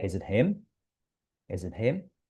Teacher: compressed, reduced, not clearly articulated vowels losing their sharpness? Okay, they do not sound so exact, so long, so loud. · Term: unstress